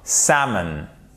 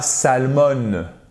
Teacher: vous n'entendez pas le l